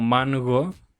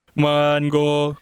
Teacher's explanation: vemos que utiliza la versión fricativa nosotros queremos usar la versión explosiva